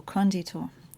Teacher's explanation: the emphasis should be on the first syllable